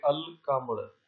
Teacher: ہم لام کے بعد والے لفظ کے ساتھ الف کو نہیں ملائیں گے، اس میں الف کو لام سے ملائیں گے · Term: حروف قمری